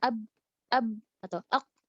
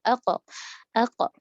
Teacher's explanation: Untuk menyelesaikan getaran itu kan jadi susah ab gitu doang kan akhirnya dibentuklah apa diberikan kolkolah, dipantulin aja abe biar sangat jelas. Kalau misalnya kita nggak kasih kolkolah maka bunyinya ab atau ak nggak jelas, maka dikasih kolkolah ako.